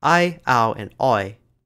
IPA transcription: aɪ aʊ and ɔʏ-ɔɪ̯